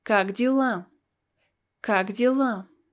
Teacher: this letter ye is pronounced as e because it's not stressed